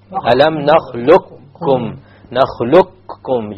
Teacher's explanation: You immediately move on to the kaf and you drop the qaf.